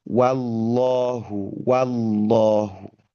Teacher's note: Wallahu itu bukan wo tetapi justru wa fathah buka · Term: wah fathah